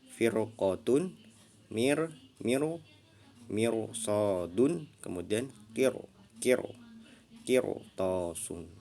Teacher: Jadi ra sukunnya dibaca tebal, ya.